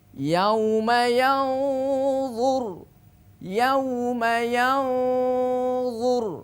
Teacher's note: d itu punya sifat istilla atau tafkhim tebal maka tebalkan ketika kita melafalkan huruf d